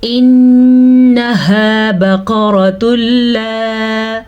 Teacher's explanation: پھر سے نون پہ غنہ کیا، نون پہ شد کی وجہ سے